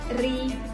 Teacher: Kalau yang berharakat kasrah itu dibacanya tipis. Contoh ini ri ini tipis bacanya.